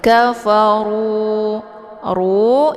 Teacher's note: zahiri kafaru ru ini hukum bacaannya ditebalkan karena ro berharakat sumah jadi posisi lidahnya pangkal lidah terangkat ke langit